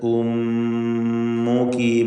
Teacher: ഉമ്മുകി മീം മുഷദ്ദദ, ശ്രദ്ധ നൽകപ്പെട്ട മീം മണിച്ചുകൊണ്ട് ഉച്ചരിക്കുക.